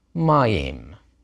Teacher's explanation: Because it's accented on that first syllable, you see that accent mark that I'm showing you, the non-standard accent. The combination sound ayi is another pattern where the accent doesn't fall on the last syllable, but on the previous one